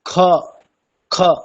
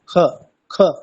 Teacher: পূর্ণ খকারের উচ্চারণ স্থান হচ্ছে কণ্ঠ, আর অর্ধেক খকারের উচ্চারণ স্থান হচ্ছে জিহ্বা মূলে।